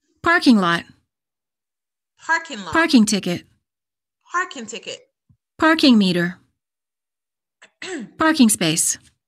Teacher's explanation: 40 44. i need you to repeat okay nouns for practice stress the first word and pronounce the two words as one